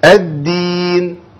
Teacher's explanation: والدال ما فيهاش هوا مافيش نفس يطلع معاها ابدا